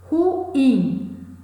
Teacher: É uma palavra oxítona, mas não necessariamente ela leva acento. Ruim, a sílaba tônica, a sílaba mais forte é in, não leva acento